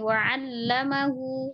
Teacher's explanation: Lam tasjidnya tidak boleh ditahan